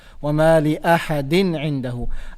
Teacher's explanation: To pronounce it clearly, you have to pronounce the tanween in a clear manner. We don't need to hide it. We don't need to apply any gunna on it. That's what idhar means.